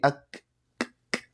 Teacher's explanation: Kaf itu jangan ake tapi ak ya, pakai udara, ada sifat hames di sana. Ya, hames dan syiddah. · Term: hames syiddah